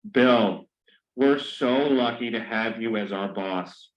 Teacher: Notice that he changed his tone of voice to show that he is reporting speech.